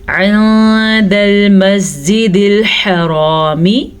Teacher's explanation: عند المسجد الحرامی, حرامی حا کو ٹھیک پڑھنا آپ نے اور را کو پر پڑھنا ہے کیونکہ را کے اوپر زبر ہے